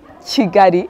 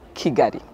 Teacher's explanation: So Kinyarwanda has a phonetic rule like any other language. So a K followed by I, vowel I or vowel E would become Che, Che. So it's like there is a Y in between. And so it's Chigari instead of Kigari.